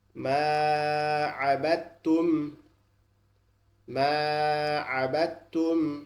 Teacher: এই দালটা বাদ যাবে, বা তার সাথে পড়বে। দালটা বাদ যাবে, বা সরাসরি তার সাথে উচ্চারিত হবে।